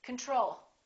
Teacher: we say control or do we say control we say control second syllable is stressed the first o is reduced